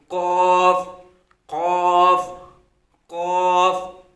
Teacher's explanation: پیچھے والا جو حصہ، ایک ہڈی والا آگے حصہ ہوتا ہے اور پیچھے آگے جو نرم والا حصہ ہوتا ہے وہاں سے یہ قاف ادا ہوتا ہے۔ زبان کی جڑ کو تعلق کے نرم والے حصے سے لگا کر اس قاف کو ادا کریں گے